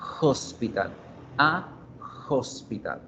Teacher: Tiene ese sonido escrito de la H. Y la H en inglés suena como la J. Es un sonido aspirado